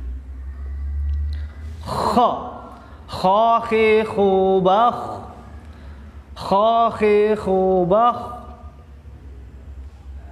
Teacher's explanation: Kata isti'la, pangkal lidah ya, naik ke langit-langit. · hamas, nafasnya berhembus atau berdesis.